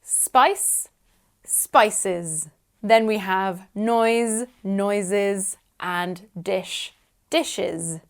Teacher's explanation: in the plural form we add an extra syllable